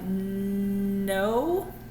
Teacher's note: feel how the front of your tongue is going up to touch on the top of your mouth